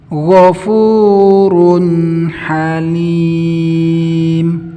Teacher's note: Karena aslinya ini harokat dhammah, yang setelahnya itu huruf nun. Nun mati ini punya sifat tawasut, maka dijalankan sedikit.